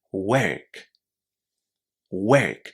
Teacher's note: You can say it in the international English accent with the R sound and say work.